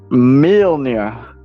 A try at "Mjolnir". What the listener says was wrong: Why are you saying mill? Mjolnir. Mjol. Mjolnir is what you just said.